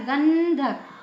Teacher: है तो ध कौन से वर्ग का है त वर्ग का तो त वर्ग का पांचवा वर्ण यानी न इसमें न का उच्चार निकला